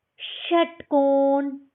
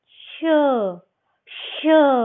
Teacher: थोड़ा लंबी आवाज है, श श। ठीक है, रगड़ कर बाहर आ रही